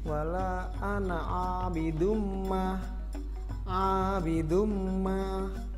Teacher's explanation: Ada domatain bertemu dengan huruf mim, maka cara membacanya harus dimasukkan dan mendengung, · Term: idgham bi gunnah